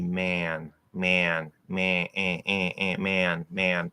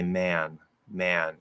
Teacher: the main point here is that um you're not fully nasalizing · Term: partially nasalized vowels